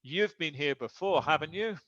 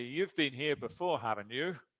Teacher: And with rising intonation, that's a real question.